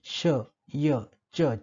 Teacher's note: जिभेचा पुढचा भाग किंवा जिभेचा टोक हा उच्चारण अवयव असतो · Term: तालव्य ध्वनी